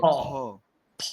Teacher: শেষের ফ এর ক্ষেত্রে বাতাসটা বের করতে হবে